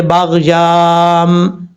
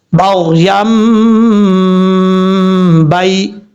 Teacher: جب یہاں پر یا کو میم کے ساتھ کنیکٹ کریں گے تو اس وقت الف کو ہم چھوڑ دیں گے، ایسا نہیں پڑھیں گے باغ یام، یہ غلط طریقہ ہے.